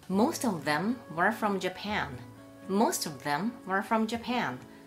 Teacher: この連結する▁T▁の前が無声音だった場合は▁T▁が▁D▁になりません。 例えばこんな感じです。▁Most▁of▁them▁were▁from▁Japan.▁Most▁of▁them▁were▁from▁Japan.▁Most▁of、▁これは▁T▁プラス母音▁of▁なので本来は▁D▁になるはずですよね。